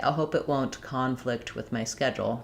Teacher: As I stress on flict, that's where my clear vowel is going to be, and my letters C-O-N no longer say con.